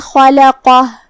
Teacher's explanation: لام حروف الترقیق میں سے ہے، مطلب ہم لام کو ہلکی آواز میں پڑھیں گے